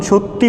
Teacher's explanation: যখন সত্যি বলা হয় তখন শেষে একটি হ্রস্বই স্বরধ্বনির আগমন ঘটে। যদিও হ্রস্বই এখানে দেখতে মাঝে, কিন্তু উচ্চারণ শেষে। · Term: অন্তঃস্বরগম